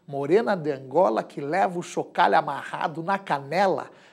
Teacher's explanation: veja a aliteração do fonema sh no texto para sugerir exatamente até o remeleixo da própria morena